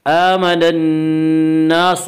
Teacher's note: کما آمن الناس، حمزہ کے اوپر کھڑا زبر ہے، کھڑا زبر کو ایک الف کے برابر کھینچ کر پڑھیں گے۔ آمن الناس، نون مشدد ہے، غنہ ہوگا، ایک الف کی بقدر غنہ کریں گے۔ الناس، الف مدہ، الف ہمیشہ مدہ ہوتا ہے اور الف سے پہلے زبر ہوتا ہے، اور الف مدہ کو ایک الف کے برابر کھینچ کر پڑھیں گے۔